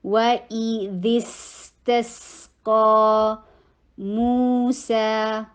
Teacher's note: ذال سامنے کے دو دانتوں کے کناروں پہ زبان کی جو ہے اوپر والا حصہ لگتا ہے، اور سین کے اوپر فوراً سے زبان نیچے کو شفٹ ہو جاتی ہے، تو تیزی سے شفٹ کرنا ہے.